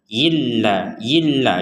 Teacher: Nun sukunnya masuk ke lam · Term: dimasukkan